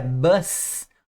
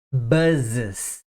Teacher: Então esse S passa a ter som de z